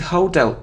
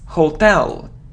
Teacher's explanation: So the stress is on the second syllable, hotel.